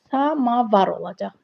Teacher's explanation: Sözdə a qalın, açıq dodaqlanmayandır.